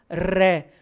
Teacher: जीभ का जो आगे का हिस्सा है ना, वो दांतों से थोड़ा सा ऊपर एक उभरे हुए कठोर भाग मसूड़ों से टकरा कर लौट रहा है, बोलना रै। तो रै में जीभ जहां टकरा रही है दांतों से थोड़ा सा ऊपर उभरे हुए कठोर भाग में, उसको मूर्धा कहते हैं।